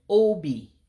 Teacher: the O, you have to make an ascending sound, like a higher pitched O sound to get it correct